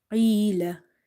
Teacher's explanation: Qaf is from the musta'aliya letters, so it's heavy.